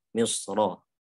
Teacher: Kalau di wasol ini jelas harus dibaca tafhim Misra